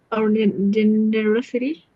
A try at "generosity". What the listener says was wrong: Where's the stress? no, the third one, generosity. Generosity.